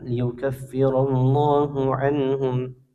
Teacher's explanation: Ya, nun sukun bertemu hamzah, nun sukun bertemu dengan huruf ha. Hukumnya izhar, dibaca jelas nunnya tanpa dengung.